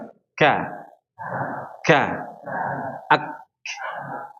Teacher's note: Kenapa ada suara keluar angin? Kenapa ya? Karena ketika melepaskannya ada celah di situ. Ak ag ak karena berada di antara langit-langit yang tulang dan langit-langit yang lunak atau daging. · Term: huruf kaf